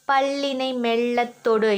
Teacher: பல்லின் அடிப்பகுதியை மெல்ல தொடும்போது, நம்மளோட நுனி நாக்கு மெல்ல தொடும் பொழுது பிறக்கின்ற ஒளி இந்த லகரம் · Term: மேல்நோக்கு லகரம்